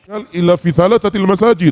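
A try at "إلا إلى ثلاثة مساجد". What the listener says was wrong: Lah, salah lagi. Bukan illa fi salasatil masajid, illa salasati masajida. Ulang.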